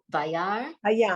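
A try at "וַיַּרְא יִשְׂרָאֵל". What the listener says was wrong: Wait. Don't forget the Yud.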